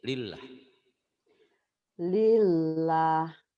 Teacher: lafaz Allah ini dibaca tipis kalau sebelumnya berbaris di bawah atau kasrah